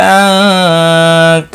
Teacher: نون ساکن کے بعد حروف اقفا کا تا آیا ہے، اخفا حقیقی ہوگا